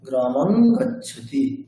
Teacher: অনুসারের পরে কবর্গের বর্ণ রয়েছে, তাই অনুসারটি কবর্গের পঞ্চম বর্ণ নকারের মতো উচ্চারিত হবে